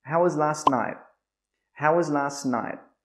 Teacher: This is a question word question again with how, so the intonation should go down at the end.